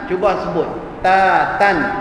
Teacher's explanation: ta memang huruf angin, ya, huruf hamas yang mana terlepas angin bila kita menyebut. Tapi angin pada huruf ta tak perlu dibuat-buat.